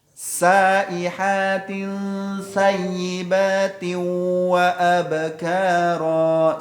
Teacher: Sin itu lidah ke bawah. Ya, gusi bagian bawah.